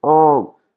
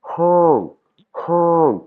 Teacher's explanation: Donc, ça va pas se prononcer "on" mais "hong" "hong" comme si je me bouchais le nez, il y a de l'air qui sort avant mon O.